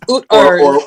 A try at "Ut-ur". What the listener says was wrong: you gotta roll your R's, like you really speaking Afro-Asiatic.